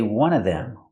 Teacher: I can say one of them, pronounce everything, one of them, or I can eliminate the v sound in of, and I can say one of them.